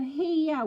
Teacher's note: Because my accent, I'll go here with a schwa at the end.